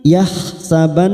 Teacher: nun yang bertasdid gunna musaddadah kita tekan selama 3 harokat